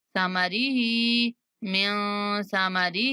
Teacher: سا کو نرمی کے ساتھ اور ہا کو کھینچیں گے